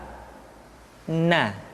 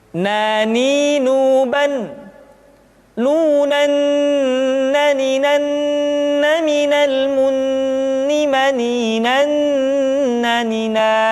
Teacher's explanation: Caranya menyentuhkan ujung lidah kita di antara posisi ro dengan la. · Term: Huruf na